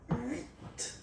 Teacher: Remember in French, this H letter here, okay, doesn't exist phonetically, so we don't really pronounce it. Okay, so if you listen carefully, you will only listen or hear these vowels at the beginning of the word.